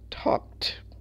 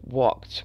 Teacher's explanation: the final ED sounds like a T